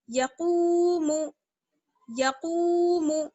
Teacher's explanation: Second line میں ہے یقوم، یا زبر یا، قاف واو پیش قو، یقو، میم پیش مو، یقوم. قاف کو کھینچیں گے، یا اور میم کو بالکل نہیں کھینچیں گے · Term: واو مدہ